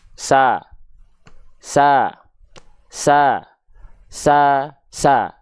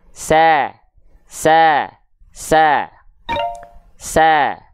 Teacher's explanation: ter lebih ruang ya lebih terbuka Nah contoh kalau kita lafalkan huruf tipis berharakat fathah vokal a tanpa senyuman alias hanya sekedar membuka mulut saja